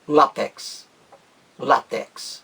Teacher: A palavra látex tem apenas uma pronúncia, com acento no A